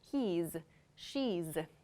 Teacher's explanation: he has or she has is reduced to he's she's so there's this z sound that happens here